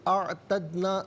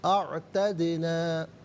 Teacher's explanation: दाल साकिन है लेकिन हरफ कलकला है तो यहाँ कलकला किया जाएगा, यानी आवाज़ लौटती हुई महसूस होनी चाहिए।